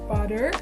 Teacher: the sounds produced by the tongue tip tapping the alveolar ridge briefly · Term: flap